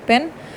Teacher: the allophone in pen is aspirated